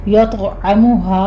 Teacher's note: طاء کے اوپر قلقلہ کرنا ہے، طاء کو پر بھی پڑھنا ہے، یعنی قوی قلقلہ کیا جائے گا